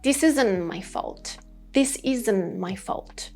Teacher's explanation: I kept that T sound inside my mouth, not letting it come out in sentences.